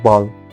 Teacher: B, voiced, bilabial, plosive, as for example in ball